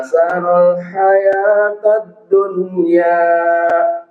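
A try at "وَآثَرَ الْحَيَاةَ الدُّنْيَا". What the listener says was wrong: Sekali lagi huruf sa jangan terlalu ini ya, jangan terlalu lidahnya itu ke bawah, nanti kalau ke bawah jadi seperti huruf sin. Sa ya, sekali lagi. Wa atharal hayatad dunya. Huruf ro tebal.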